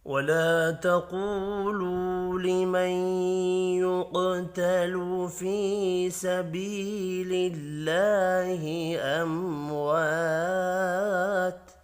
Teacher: میم ساکن کے بعد واو ہے، اظہار شفی ہوگا، غنہ نہیں ہوگا۔ · قوف حروف مستعلیہ ہے، پر پڑھا جائے گا۔ · الف مدہ اور 2 واو مدہ ہیں، تینوں کو 1 الف کے برابر کھینچ کر پڑھیں گے۔